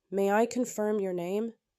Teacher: Rising intonation invites a yes/no reply.